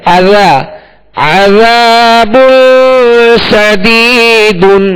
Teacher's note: یہاں عذا ذال نرمی کے ساتھ پڑھیں گے، ذال کے ساتھ الف مدہ ہے، ایک الف کی مقدار کھینچ کر ادا کریں گے، مگر ذال میں نرمی پیدا کریں گے، ذال میں سختی نہیں ہوگی